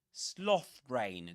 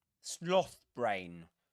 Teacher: the stress goes on the first element on the first word in the compound noun